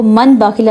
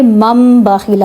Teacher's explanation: اب یہاں پہ آپ نے دیکھا ہوگا چھوٹا سا میم لکھا ہوتا ہے، آگے دیکھیں لَيُنبَذَنَّ، یہاں پہ دیکھیں نون ساکن کے بعد پھر سے با ہے تو یہاں پہ لَيُن نہیں لَيُم پڑھیں گے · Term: اقلاب